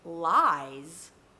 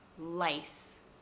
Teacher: the difference between the Z and the S is that the Z uses your voice and the S doesn't. There's no vibration here.